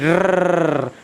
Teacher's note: देखिए हम लोगों ने बचपन में क्या है, जब हम लोग खेलते थे तब हम लोगों ने क्या गाड़ी चलाई होगी, तो हमने इस रे से ही स्टार्ट हम क्यों करते थे कि रर, क्योंकि रे जो वर्ण ऐसा है कि जिसका हम उच्चारण करते हैं तो हमारी जीभ में कंपन होता है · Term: प्रकंपित व्यंजन